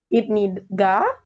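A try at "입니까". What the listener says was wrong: K ka bukan ga ya. K. K. K.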